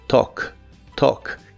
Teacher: La A se pronuncia como una O y la L no se pronuncia.